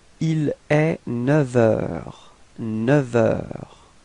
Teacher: we won't pronounce the F, but it would sound a bit more like V, like a V. Okay, so if you make the liaison, it would sound like il est 9 heures.